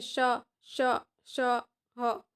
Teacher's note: ઘર્ષણ સાથે બહાર નીકળતી હવા સાથે ઉચ્ચારાતા વ્યંજનને ઉષ્માક્ષર અથવા તો સંઘર્ષી વ્યંજન કહેવામાં આવે છે.